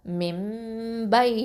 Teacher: இந்த நூனை மீமா மாற்றிடுவோம். அப்போது மிம் மிம் அப்படின்னு சொல்லணும், ஒன்றா கொடுக்கணும் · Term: இக்லாபு சட்டம்